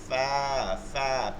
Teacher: নিচের ঠোঁটের পেট সামনের উপরে 2 দাঁতের আগার সঙ্গে লাগায়, পেট মানে হচ্ছে ভিজা জায়গা, আর সামনের উপর 2 দাঁতের আগার সঙ্গে লাগায় ফা ফা, পেট এবং দাঁতের মাঝখান থেকে একটা বাতাস বের হয়ে যাবে। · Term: 14 নম্বর মাখরাজ